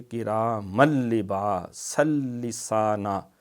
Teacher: لام اور را میں ادغام تام ہے، اس میں غنہ نہیں ہوتا، بغیر غنہ کے ہوتا ہے